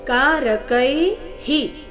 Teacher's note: ವಿಸರ್ಗದ ಉಚ್ಚಾರಣೆ ಇಲ್ಲಿ ಹಿ ಎಂದು ಹ್ರಸ್ವ ಹಿ ಬರಬೇಕು